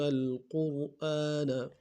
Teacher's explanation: قاف کو موٹا ادا کرتے ہیں، را کے سامنے لائیں گے، را کو موٹا ادا کریں گے